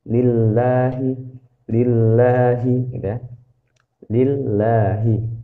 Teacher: kita bisa baca tipis ketika dia di sebelumnya itu kasroh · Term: dibaca tipis